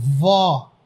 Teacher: O acento agudo serve para deixar o som da vogal aberto.